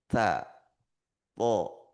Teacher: Sedangkan lidah sama-sama diletakkan ujung lisan diletakkan di pangkal gigi atas. Ta th ya di pangkal gigi bukan di langit-langit.